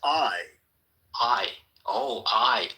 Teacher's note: That's actually two sounds. Ah and E put together real fast. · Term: diphthong